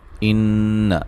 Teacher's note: ان نون مشدد پہ غنہ ضروری ہے